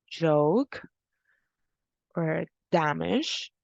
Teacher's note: We then have the ya, or like ja sound, which is a voiced palatal affricate